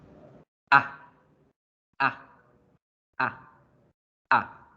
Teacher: La segunda vocal corta, que era esa A que parecía la A mayúscula, la vamos a pronunciar igualito que pronunciamos la vocal A en español, solo que abrimos un poco más la boca y la hacemos corticísima.